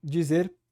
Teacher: Dizer, perfeito aqui, né? A palatalização, dizer, a sibilante sonora, dizer, muito bom.